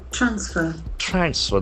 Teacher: The accent falls on the first syllable. Transfer. If you use it as a verb, the accent falls on the second syllable.